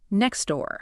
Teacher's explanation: When spoken quickly, the vast majority of native speakers will drop the T entirely so it sounds like next door. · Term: elision